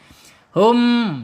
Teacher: Kemudian secara makhraj ada di asyafatain. Yang pertama dua bibir. Kemudian yang yang kedua makhrajnya ada di alkhaisum yaitu rongga rongga ee hidung ya. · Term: mim, idhar syafawi